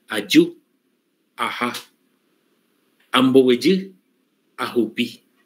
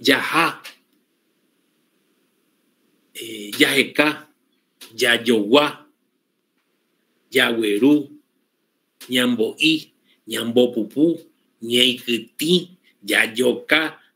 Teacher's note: Y son todas palabras que el 95% son así, son agudas, que terminan con la acentuación en la última vocal. Esa es una característica del guaraní.